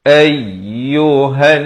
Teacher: nun sabdu didengungkan 2 harakat